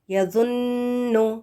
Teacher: نون مشدد آ گیا ہے نا، تو یہاں پر آپ نے غنہ کرنا ہے